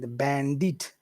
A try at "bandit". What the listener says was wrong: Okay, but you're putting the accent on the wrong syllable. You're putting it on the final syllable. but it's not bandit and bandied. It's bandit and bandied.